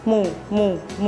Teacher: ให้ห่อริมฝีปากแล้วให้ริมฝีปากบนและล่างปิดชิดกันพร้อมทั้งทำเสียงขึ้นจมูก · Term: มอม้า